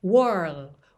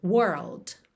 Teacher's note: Então, aqui no caso, were, porta, were, tá? Depois, você põe o L, língua no céu da boca, whirl. E aí é só fechar com o D, world.